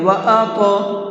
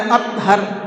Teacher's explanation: ان کے اندر قلقلہ کرتے ہیں، ہلکا سا آواز کو ڈبل کرتے ہیں